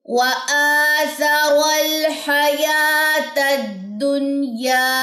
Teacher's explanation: الف کے اوپر کھڑا زبر وہ لمبا ہوگا، یا کے اوپر کھڑا زبر وہ لمبی ہوگی